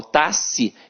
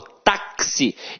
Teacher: tenho quatro fonemas não eu não falo taxi eu falo taxi então o x aqui tem som de KS ou seja uma letra tem dois sons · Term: dífono